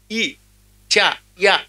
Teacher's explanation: ఇ చ య అనండి ఈ నాలిక తాలుకి పైకి తగులుతుంది అంచేత తాలవ్యము అన్నారు